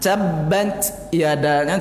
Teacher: bocor halus saja hamasnya. Enggak bocor kasar dah.